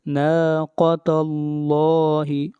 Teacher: قاف کو موٹا پڑھیں گے اور یہاں پر بھی لفظ اللہ کو موٹا پڑھا جائے گا